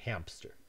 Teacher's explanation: In hamster, we have a bilabial nasal, and we insert a bilabial stop, a P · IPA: [hæmpstəɹ]